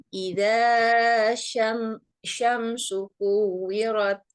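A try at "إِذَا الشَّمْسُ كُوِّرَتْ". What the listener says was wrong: Iza nggak usah terlalu panjang. Jadi 2 harokat saja. Itu nggak dileburkan. Iza syamsu kuwirat. Di situ ada alif eh mudgham syamsiyah. Jadi di huruf za langsung dilebur ke huruf shin karena alif lam samsiah.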